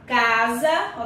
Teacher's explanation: sempre que o S vier nesta posição intervocálica no meio de duas vogais, a palavra vai ser escrita com S, mas com som de Z.